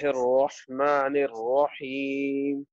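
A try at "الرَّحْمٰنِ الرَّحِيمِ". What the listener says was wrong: یہ میم کو تھوڑا سا آپ نے کھینچنا ہے، اوپر بھی آپ نے میم نہیں کھینچا، میم کے اوپر کھڑی مد ہے، تھوڑا سا لمبا کریں۔ الرحمن الرحیم۔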